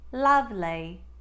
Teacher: Lovely's sound will become ah, as in spa. You may also do an on glide with the E sound that comes at the end of lovely